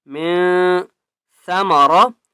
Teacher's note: سا کو نرمی کے ساتھ پڑھیں گے اور را کو موٹا کر کے پڑھیں گے